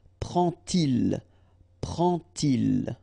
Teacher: you won't pronounce it like d to make the liaison, but you will pronounce it like t.